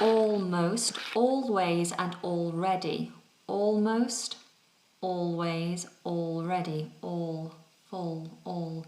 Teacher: so this is a dark l sound · the back of the tongue on a dark L is a little bit higher